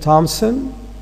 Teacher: we tend to insert the p between m and s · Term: epenthesis